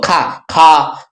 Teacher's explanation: खा बोलते हैं तो देखिए ज्यादा वायु निकलती है, तो इसीलिए इसको बोलते हैं महाप्राण।